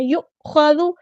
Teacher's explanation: حمزہ کی آواز میں جھٹکا دینا ، یؤخذ، خا یہاں پہ ہمارا ہیوی لیٹر ہے، پورا ادا